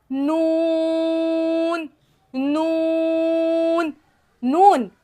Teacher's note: नून में 6 दांतों के मसूड़ों से लगाना है। ثنایا رباعی اور انیاب کے مسوروں سے لگائیں گے تو نون ادا ہو جائے گا، نون۔